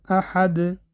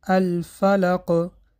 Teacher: قلقله به 2 قسم تقسیم می شود. یکم، قلقله کبرا یعنی قلقله کلان، صدا براتر است. این در آن حالت است که حرف قلقله در آخر کلمه آمده و بعد از خواندن کلمه وقف کرده می شود.